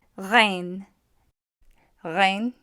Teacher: Rein is going to be produced in the throat. What will help is to restrict the airflow.